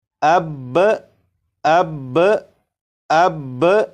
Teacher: یہ جو پریکٹس کی گئی، یہ اس طرح سے پریکٹس کی گئی ہے کہ با کے اوپر جو تشدید اور زبر ہے ان دونوں کو پڑھا گیا، لیکن اگر آپ وقف کر کے پڑھیں تو وقف کی صورت میں با کے اوپر جو زبر ہے، زبر کو نہیں پڑھیں گے، صرف تشدید کو پڑھیں گے